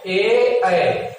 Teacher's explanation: ए ऐ का जो उच्चारण स्थान है वो 2 स्थान से होता है, एक कंठ से भी होता है और एक तालु से भी होता है। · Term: कंठ तालु